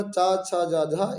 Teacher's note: ये हमारे तालु से बोले जाएंगे।